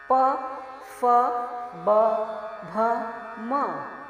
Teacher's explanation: प फ ब भ म ओष्ठ कहे गए क्योंकि इनका उच्चारण होठों के मिलने पर ही होता है।